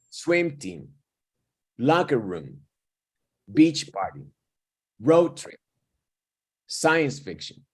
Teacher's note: hago más pequeña la segunda palabra en mi pronunciación